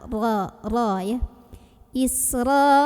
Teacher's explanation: dibunyikan secara tafkhim karena rok barisnya di atas jadi bacanya tebal dengan cara mengangkat pangkal lidah kita